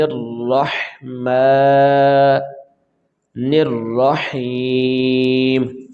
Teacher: بسم اللہ الرحمن الرحیم، یہ یہاں پہ جب ہم وقف کریں گے تو یہ میم کے نیچے جو زیر ہے یہ ہم ادائیگی میں نہیں لائیں گے، میم کے اوپر جزم آ جائے گی جی، جزم لگا کر ہم اس کو پڑھیں گے تو ہمارا یہ ورڈ ٹھیک ہوگا، کیونکہ ہم وقف کریں گے تو وقف کی صورت میں ہم حرکات نہیں ادا کرتے۔